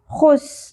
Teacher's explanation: خو پر کریں گے، خراش کا ایلیمنٹ بالکل کلیئر ہونا چاہیے